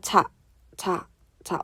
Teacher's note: 막았다가 터트렸다가 마찰까지 일으키는